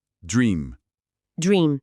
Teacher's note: E o som do I aqui é tipo um i longo do português. É um padrão de vogal bem importante no inglês.